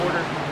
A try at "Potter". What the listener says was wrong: You said Porter. It's Potter.